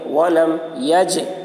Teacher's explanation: جیم حروف قلقلہ میں سے ہے اور اس پر جزم ہے، اس لیے جیم میں قلقلہ ہوگا